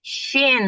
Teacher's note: Kesalahan yang sering terjadi, huruf shin diucapkan dengan memajukan bibir.